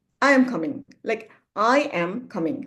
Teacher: when I'm responding, I am coming. Like I am coming. Coming is going down.